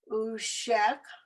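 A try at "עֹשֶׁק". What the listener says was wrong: Careful, there's the dot above the ayin. O. Oh, because the dot's over here.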